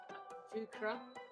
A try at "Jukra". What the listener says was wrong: Jukra. You have to roll the tongue. It's very important. If you don't roll the tongue, it means something else.